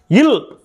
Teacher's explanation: மேல்வாயை நாக்கின் ஓரங்கள் தடித்து தடவுவதால் பிறக்கிறது